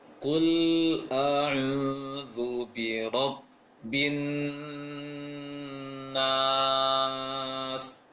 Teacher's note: Pengucapan lam adalah lisan di atas, di gusi atas, kul melebar, kul, jangan sampai keluar lisannya.